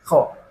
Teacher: Dan kho harus ada suara dengkur seperti orang mendengkur itu ya